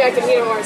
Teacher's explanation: Well, this means, of course, that you're very, very hungry. Notice the T at the end of the word eat links to the next word, the schwa sound. So it's a flap T or a light D sound.